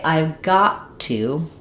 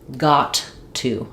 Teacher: I don't make two T's here. It's not got to. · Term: stop T